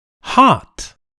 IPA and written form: hɑːt (hot)